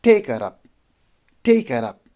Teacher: so the take would be take is one syllable word so the take would be a stress one and her would be unstressed and up would be unstressed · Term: dactyl